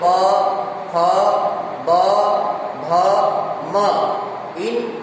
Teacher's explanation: प बोलते ही ओष्ठ हो गया, प, फ, ब, ये जो वर्ण है, इन वर्णों का उच्चारण ओष्ठ से होने से इनका नाम ओष्ठ्य वर्ण है